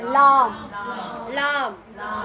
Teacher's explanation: அல் இல் உள் உள் அவ்வளவுதான் ஓகே ஹைர் அப்புறம் லாம் இது ஈஸிதான் நாவின் நுனி மேல் முரசை தொடும்போது ஒலிக்க பெறுகின்றன